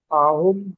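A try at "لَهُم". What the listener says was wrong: আহম না, এটা লাহুম, লাম হবে, কারণ পরবর্তী অক্ষরকে টাচ করলে লাম হয়ে যায়।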